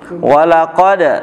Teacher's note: walaqad dipantulkan heeh Kenapa dipantulkan karena ada Dal sukun